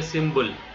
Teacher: Tamil people pronounce like a symbol. P, instead of the P, they pronounce like a B, because pa sound is not existing in Tamil